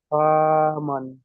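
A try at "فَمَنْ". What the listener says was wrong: ফা টান হবে না, ফার উপর জাবার আছে, জাবার টান হয় না। ফা জাবার ফা, মিম নুন জাবার মান, হামান। নুন সাকিনের ডান দিকে নয়, নুনের উপরে সাকিন এসেছে। সাকিন যুক্ত অক্ষরকে ডান দিকে অক্ষরের সাথে মিলিয়ে পড়তে হয়।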